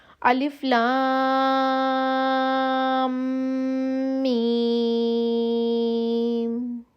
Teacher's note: میم کے اوپر شد ہے اس لیے میم کی آواز تھوڑی سی ہم ناک سے نکالیں گے